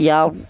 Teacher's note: ro tersebut dibaca tebal atau dibaca tafhim